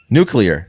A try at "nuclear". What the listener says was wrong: Nuclear, yeah. No. You added a syllable.